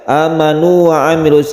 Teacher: disebut juga Mad tamkin ada yang menyebut seperti itu yang jelas ini tidak di idghamkan meskipun wau bertemu dengan wau karena apa karena sebelumnya ada dhomah · ada Hamzah yang panjang satu Alif ini disebut mad badal Badal itu artinya ganti ini asalnya adalah a manu a Diganti